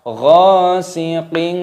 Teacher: Ghasiqin, kasrah tanwin bertemu dengan huruf alif, hukumnya dibaca idhar halqi, artinya jelas, halqi artinya tenggorokan, maka dibaca jelas, tidak boleh didengungkan ghasiqin, tidak boleh, harus jelas.